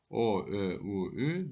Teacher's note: Tələffüz zamanı dodaqların vəziyyətinə görə dodaqlanan saitlər və dodaqlanmayan saitlər. Dodaqlanan saitlərdə nisbətən dodaqlar irəli gələrək dairəvi forma alır